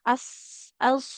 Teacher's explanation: Jadi jaga sifat tebal dari huruf shad. Karena huruf shad ini kalau lagi sukun itu kalau tipis nanti mirip sin ya.